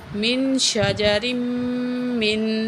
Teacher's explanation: یہاں میم میں غنہ کریں گے